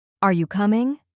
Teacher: Notice how your tone rises at the end.